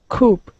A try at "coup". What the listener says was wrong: No, without the P at the end. Coup. Coup.